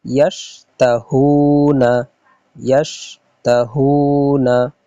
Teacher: হাও অপেশ হু, হাও অপেশ হু একটু লম্বা হবে কারণ এখানে মদ আছে। ওয়াও সাকিন ডাইনে পেশ, এই জন্য এখানে হু একটু লম্বা হবে।